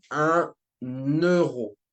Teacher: it's like it's linking basically the number with euro, right? With nouns that start with a vowel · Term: liaison